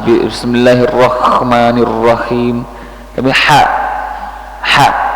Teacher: Ha jangan terlalu dekat dengan Kaf bukan k bukan Kha